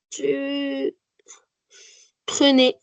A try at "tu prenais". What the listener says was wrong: Très bien, bravo.